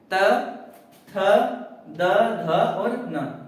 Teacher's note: अब प्यारे बेटे जब हम द बोलेंगे ना, द, तो आप लोग महसूस करेंगे कि आपके ऊपर के दांतों पे आपकी जीभ जाके टच हो रही है